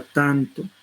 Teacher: Aquí ha resultado como nasal interdental, porque ha asimilado el segmento circundante